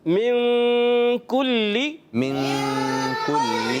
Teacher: ہم نے غنہ کیا ہے نا، ناک میں آواز لے کے گئے